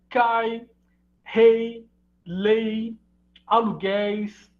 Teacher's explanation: Ditongos orais, então, com a semivogal I